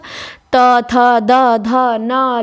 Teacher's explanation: त वर्ग ही पूरा है जिसके उच्चारण में जीवा दांतों को स्पर्श करती है। दंत्य है सब। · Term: दंत व्यंजन